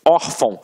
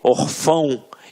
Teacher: a sílaba tônica está na penúltima sílaba. Por isso é uma paroxítona.